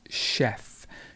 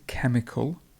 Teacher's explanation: This word is chemical, so we go from a sh sound to a k sound. This is a k, this one is sh, and this one is k, so this is chemical.